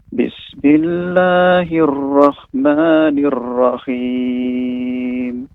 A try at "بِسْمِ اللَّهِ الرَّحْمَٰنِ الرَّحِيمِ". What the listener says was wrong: Untuk huruf ra, Bapak, ini lebih dilembutkan lagi dan getarannya dikurangi ya. Bismillahirrahmanirrahim.